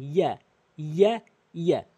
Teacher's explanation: জিব্বার মাঝখানে উপরে তালুর সঙ্গে লাগালে ইয়া